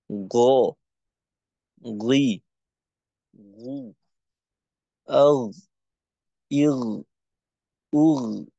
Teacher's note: জিহ্বার গোড়াকে উপরের দিকে রেখে তারপর উচ্চারণ আওয়াজকে মোটা করতে হবে। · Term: গইন